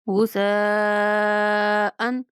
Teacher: سا کو نرمی کے ساتھ پڑھیں گے، مد کو 5 الف کے برابر لمبا کریں گے اور حمزہ پہ اظہار کریں گے کہ تنوین کے بعد حمزہ آ رہا ہے